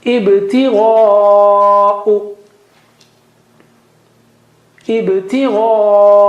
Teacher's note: Ibtigha'u, gha is high, okay? And ba, there is qalqala there because ba has sukun.